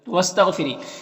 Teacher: غین حروف مستعلیہ میں سے پر پڑھیں گے اور را کے نیچے زیر، را کو باریک پڑھیں گے